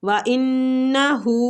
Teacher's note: نون مشدد پہ غنہ کریں گے، الٹا پیش کو کھینچیں گے